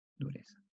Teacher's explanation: Nosotros decimos dureza como una S por el problema del ceseo.